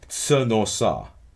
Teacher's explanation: Finally, preposition plus pronoun, tsnosa, right, with schwa after the aspirated ts